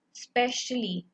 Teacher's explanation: अभी मैंने स्पेशली भी बोला तो स्पे पे हमने ज्यादा फोकस किया, मतलब ज्यादा जोर दिया